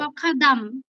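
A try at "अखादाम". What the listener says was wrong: ম এর উচ্চারণ একটা অ আছে শেষে অখাদাম বললে হবে না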